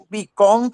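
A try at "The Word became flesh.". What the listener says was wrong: Became. Sí, la palabra became. Came. Acuérdense que esa es una A. Esa es una A y la A es A, ¿no? Became.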